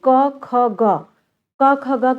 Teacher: जीभ की मूल में से उच्चारण इसका किया जाता है, यानी जीभ के पिछले भाग और कंठ की सहायता से बच्चों ये इसका उच्चारण होता है